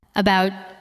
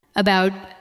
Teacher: We say about with a light first sound and a stronger second part.